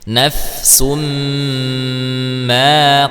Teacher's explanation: maka dibacanya dengan gunah ya kita rasakan betul-betul e masuk ke dalam hidung ketika mengucapkannya